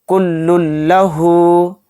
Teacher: تنوین کے بعد لام آ گیا تو اس میں ادغام بلا غنہ کا قاعدہ ہو رہا ہے، اس میں ہم غنہ نہیں کریں گے، یعنی لام کو لام میں ایک دم ہم ملائیں گے